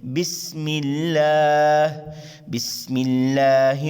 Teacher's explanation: بسم اللہ، شروع میں دیکھیں سین ہے، باریک سیٹی سے ادا کریں گے. لفظ اللہ کے لام سے پہلے زیر ہے. لفظ اللہ کے لام کو باریک ادا کریں گے. آگے ہا حلقے آری حصے سے سینے کی طرف سے ادا کریں گے.